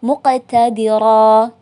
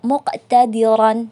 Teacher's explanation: Dia tidak terdengar tanwinnya karena diwaqafkan. Tidak dibaca muqtadiran, tetapi muqtadira.